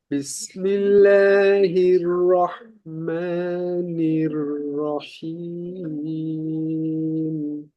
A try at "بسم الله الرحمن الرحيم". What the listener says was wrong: রয়ের ক্ষেত্রে কিন্তু আমরা বরাবর একটু শিথিল থাকি, তো আরেকটু মজবুত করা দরকার। যেমন হির, একটা হলো হির, হির, হির রহমা। তো এটা আহ, এক প্রকার বলা যেতে পারে যে রয়ের প্রথম অংশ পাতলা হয়ে গেল।